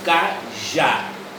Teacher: Nós temos duas sílabas na palavra cajá, mas a mais forte é já.